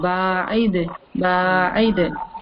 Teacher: When you say ba'id, the ba, we stretch 2 counts.